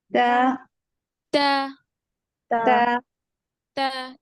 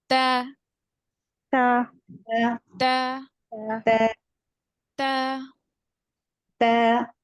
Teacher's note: ऊपर के दांतों के जड़ों को अंदरूनी हिस्से को ठीक है ऊपर के दांतों के अंदरूनी हिस्से और उसकी जड़ों को लगेगी नोक न टिप ऑफ द टंग ऊपर के दांतों के अंदरूनी हिस्से को लगेगी ठीक है और इसको बारीक पड़ेंगे बारीक पड़ेंगे यानी मुंह स्प्रेड · बारीक पड़ेंगे यानी मुंह स्प्रेड होगा हमारा जो होठ है स्प्रेड होंगे गोल नहीं होंगे